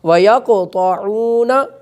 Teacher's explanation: طا ہے اسے بھی پر کر کے پڑھیں گے